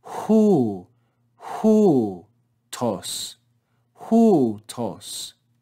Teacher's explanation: The rough breathing puts the breath at the beginning, and the circumflex reads with a rise and a fall.